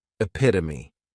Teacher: Next is epitome. And this noun has four syllables and the stress is on that second syllable · this noun has 4 syllables, and the stress is on that second syllable, epitome. This is a word that when you see it, many times people may mispronounce it because the 3rd syllable has that schwa, and the last syllable is that long epit-o-me.